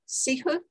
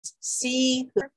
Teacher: This is the word for flower, and I use the gestures for short being this and then long for this because in the Hopi, the vowel sound is the same for the short and the long. It's just making sure that it's stretched out a little bit more